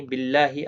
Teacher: اللہ کا لام یہاں پر بھی باریک پڑھا جائے گا اس زیر کی وجہ سے، اس کے اوپر کھڑی زبر بھی ہے، 1 الف کی مقدار کے برابر کھینچ کر پڑھا جائے گا۔